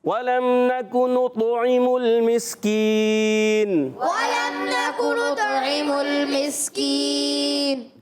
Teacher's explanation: مسکین میں میم کو سین سے ملانا، اس کو بھی نہیں ہلائیں گے، ساکن رکھیں گے